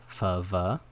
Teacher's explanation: labiodental, which is the lips and the teeth